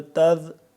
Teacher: ذال کو ہم نرمی سے زبان کی نوک کو دانتوں کے درمیان باہر نکال کے پڑھیں گے